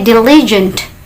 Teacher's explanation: Perhatikan suara T di akhirnya itu teman-teman harus diletupkan